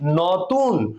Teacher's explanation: নতুন বললে তালু থেকে বা তালব্য থেকে এটি উচ্চারণ হয়। এই কারণে আমরা উচ্চারণ স্থান লিখছি তালব্য।